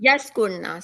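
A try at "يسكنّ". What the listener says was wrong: Why Ra coming in between?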